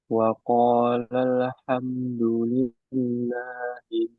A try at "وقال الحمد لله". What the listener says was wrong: Lamnya sedikit mantul tadi.